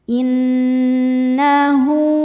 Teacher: ada ha damir yang diapit dua huruf hidup dan setelahnya bukan hamzah. Cara bacanya ha dipanjangkan dua harakat. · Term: silah qasirah